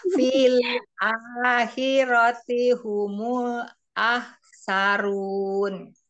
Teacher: Hati-hati di lam sukun umi, jangan keputus ya, ada sifat bainiyah ya atau tawasut mengalir sebentar pada kata lam